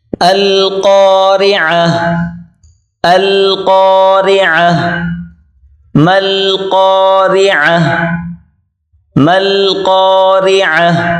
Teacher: عین کو گلے سے نکالیں زور لگا کر